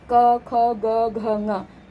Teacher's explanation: ये क वर्ग जो है ये इसका उच्चारण स्थान इसका उच्चारण स्थान कंठ होता है, तो 5 ही वर्णों का उच्चारण स्थान भी कंठ ही होगा।